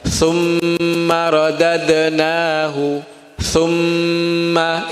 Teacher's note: Gunnah itu bacaan dengung, bacaan sengau dalam bahasa Indonesia. Bacaan yang ketika dibunyikan itu bunyinya akan keluar di hidung sini. Hidungnya bergetar.